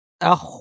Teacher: সাকিফতুমুহুম ওয়া আখ বলার সময় হয় উচ্চারণে খটা ভারী হবে। আখ বলার সময় জিহ্বার গোড়াটা তালুতে লেগে যাবে, আওয়াজটা ভারী হবে এবং খয়ে আওয়াজ থাকবে, বাতাস থাকবে। ওয়া আখরিজুহুম, ওয়া যেন ভারী না হয়, বলব না।